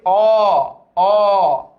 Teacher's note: অ এর বিবৃত উচ্চারণ কোনটা যখন মুখটা অনেক খোলা থাকে